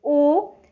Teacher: जब आप उ बोलते हो तो आपकी होंठ की स्थिति क्या होती है, गोलाकार हो जाती है